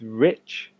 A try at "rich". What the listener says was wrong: because it took one or two times for you to say rich for me to understand you were saying rich. I think just very slightly more emphasis on the I. So rich. It was just that one word I was maybe try and work on that.